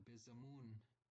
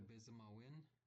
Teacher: Notice how the AW drops to un. It's also acceptable to say, get the bizamawin.